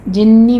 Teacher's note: جنی میں نون مشدد ہے، غنہ واجبہ کریں گے